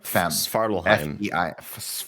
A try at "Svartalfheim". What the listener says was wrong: No, there's no H. It's an F. Svartalfheim.